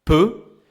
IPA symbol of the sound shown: ø